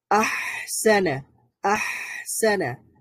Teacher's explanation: হায়ের মধ্যে সাকিন করলেও সাউন্ডটা জারি থাকছে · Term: রাখাওয়া